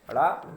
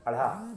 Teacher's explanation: ये भी मूर्धन है, सघोष है, लेकिन ये महाप्राण है।